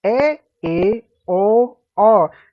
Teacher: जिन स्वरों के उच्चारण में मुख आधा खुलता है, याद रखिए, विव्रत में पूरा खुल रहा है, अर्ध में आधा खुल रहा है, उसे अर्धविव्रत स्वर कहते हैं।